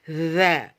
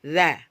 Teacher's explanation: Kalau tha mempunyai sifat hamas, udaranya harus mengalir atau nafasnya mengalir, sedangkan jahar nafasnya tidak boleh mengalir. Jadi tidak boleh bocor.